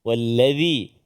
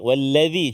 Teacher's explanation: Wallazi, hujung lidah keluar sikit. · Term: huruf zal